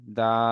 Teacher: দাল ইয়া সাবা দা, এখানে বানান করার সময় ইয়াটাকে দালের সঙ্গে মিলিয়ে বানান করতে হবে। যখনই আপনি পড়বেন তখনই শুধু দাল খাড়া সাবা দা বলে টানতে হবে, দাই এমনটা নয়